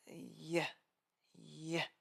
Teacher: Think of it as adding a tiny sharp I before the sound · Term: Y sound